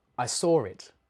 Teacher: sometimes Australians will put an R sound in between two vowels